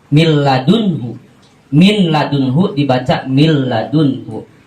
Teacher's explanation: Ketika nun mati atau tanwin bertemu dengan salah satu huruf yang 2 tadi, contoh bertemu dengan lam, maka bunyi nun dan tanwinnya tidak disertai dengan gunah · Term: idgham bila gunah